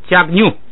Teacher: 加不能往下降，所以读成加 。后边那个呢是平声，马在这个上加字下边读平声，后边一摁变成这个降了。擦巴，前边那个降变成平调。下边一个皮瑞，本来是撇，这个地方呢，因为这个藏族这个用的很平常很多，所以它后边是闭元音的时候啊，它就